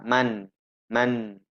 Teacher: ujung lidah kita pasti menempel ke langit-langit